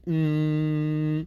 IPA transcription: m